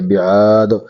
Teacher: مقدار اس کو کھینچیں گے بعاد دال کو ساکن کریں گے جب دال ساکن ہو جائے گا وقف کی حالات میں تو شرط موجود ہوا دال ساکن ہے تو اس پر قلقلہ ہوگا